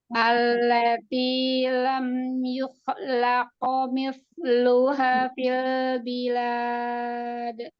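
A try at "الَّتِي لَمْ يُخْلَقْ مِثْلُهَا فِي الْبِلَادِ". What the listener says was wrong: Nah, masih ikhtilas ya, Bun. Jadi nggak apa-apa, santai aja misalnya. Misluha fil bilad.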